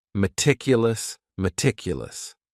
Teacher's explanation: The next word is meticulous. And this word has four syllables. And the stress is on that second syllable